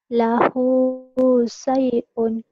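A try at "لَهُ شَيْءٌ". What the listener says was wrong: shin. Lahu syai'un. Diulang.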